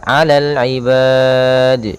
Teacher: kita memanjangkannya boleh 2 harakat, boleh 4 harakat, boleh 6 harakat. Maka alal ibad itu 2 harakat. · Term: mad arid lisukun